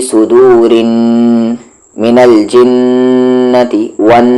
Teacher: نون پر تشدید ہے, یعنی آواز کو وہاں پر ناک میں تھوڑی دیر رکھ کر پڑھیں گے